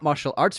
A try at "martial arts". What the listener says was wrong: You said martial like you're British. Like top martial arts. Martial.